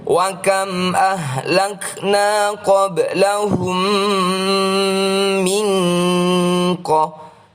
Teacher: Bacaan “nun sukun” yang diikuti “qaf” merupakan bacaan Ikhfa Hakiki. Bacalah dengan nasalisasi dua ketukan.